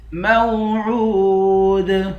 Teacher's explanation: عین کو واو کے ساتھ ملا کر واو کو 1 الف کے مقدار کھینچ کر پڑھیں گے۔ آخر میں حروف قلقلہ ہے، یہاں پر قلقلہ کریں گے۔ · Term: حروف مدہ